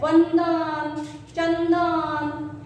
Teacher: चंदन बोलते वक्त अनुस्वार के उच्चारण के वक्त हमारा जीवा का आगे का हिस्सा दांत को चिपकता है। ऐसे चंदन उच्चारण आता है। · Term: दंत्य